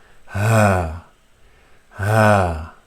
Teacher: So ha is from the bottom part of the throat with an open mouth.